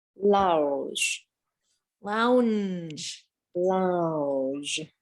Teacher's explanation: the way that we make the l is we stick our tongue up right behind the teeth but we kind of dip the rest of it down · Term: the l sound